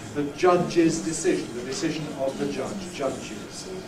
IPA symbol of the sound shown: ʤʌʤ